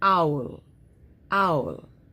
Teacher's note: OU is a diphthong. It has one sound, and that's ow. Okay? Now, if the letter L comes after it, it's so easy to say owl.